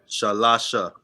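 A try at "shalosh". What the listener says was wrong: Or with the drop the A, right? Shalash.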